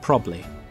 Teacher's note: When there are two similar syllables next to each other, so folks just skip one.